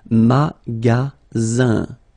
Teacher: Then you get the sound Z, alright? And then the ending here is IN, so it's nasal, it goes in your nose, and it's un.